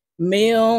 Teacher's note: বিহিজারাতিম, মিম নুন জের মিং, এই মিম নুনের সাথে গুন্নার সহিত পড়তে হবে কারণ নুন সাকিনের পরে ইকফার হরফ সিন আসছে, তাই এই নুনকে নাকের ভিতরে লুকাইয়া গুন্নার সহিত পড়ব